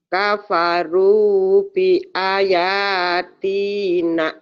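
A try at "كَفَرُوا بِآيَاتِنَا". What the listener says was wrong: A sama ya-nya panjang kan ada yang berdiri, Bu. Itu namanya bad asli. Bi aya.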